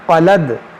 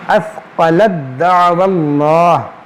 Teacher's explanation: حرف میں داخل ہو جاتا ہے، اس کو پڑھیں گے اثقلد، یہ تا جو ہے دال میں داخل ہوگا